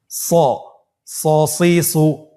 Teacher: এখানেও আমাদের একটা জিনিস খেয়াল রাখতে হবে, হরফটি যেহেতু মোটা অক্ষর, এই হরফটি সা বলা যাবে না, স বলতে হবে, একটু মোটা করে বলতে হবে